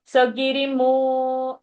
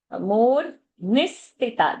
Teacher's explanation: So Giri, that is short, and Mu is long, and that Ni is short.